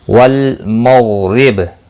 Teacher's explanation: با وقف کی صورت میں ساکن پڑھا جائے گا، اس پر قلقلہ بھی ہوگا ، اور ملانے کی صورت میں قلقلہ نہیں ہوگا، باقی حرکت · غین مستعلیہ ہے، پر پڑھا جائے گا